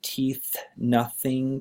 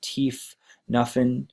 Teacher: the F can be substituted for th